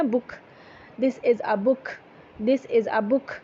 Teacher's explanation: یہ بک میں جو کے ساتھ آپ ایک ہلکی سی ہا کی آمیزش ہے